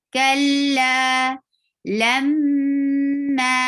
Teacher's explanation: Attach lam with mim very clearly and bring gunna for 2 haraka long, and then make it 2 haraka long vowel too, because you find fatha before alif.